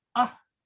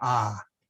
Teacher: We tend to stretch that out. So for A, the difference is not in the sound so much as it is how long you say the vowel. So when you see a short A, say ah.